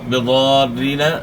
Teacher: تو میم ساکن میں آپ نے غنہ کرنا ہے، اور اس طرح ضاد موٹے حروف میں سے تو ضاد کو آپ نے موٹا ادا کرنا ہے